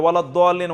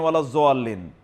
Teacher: বাংলায় তো দোয়ারে জোয়া উচ্চারণ করে